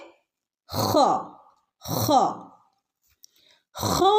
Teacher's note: തൊണ്ടയുടെ നടുക്ക് നിന്നാണ് ഹ ഹ എന്നുള്ള ശബ്ദം വരുന്നത്